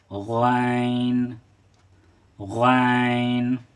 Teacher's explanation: ये हलक से अदा होता है। और इसको हम लोग मोटा पढ़ेंगे,